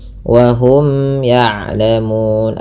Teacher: ada hukum tajwid berupa izhar syafawi, dibaca dengan jelas mimnya. Kemudian pada lafal ya'lamun, mun, panjangkan ya 2 harakat, 4 atau 6 harakat, yang dimana kita boleh memilih.